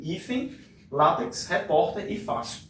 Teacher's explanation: Em todas elas, a sílaba mais forte aparece na penúltima sílaba, tá? Eu vou circular aqui para você observar melhor comigo. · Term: paroxítonas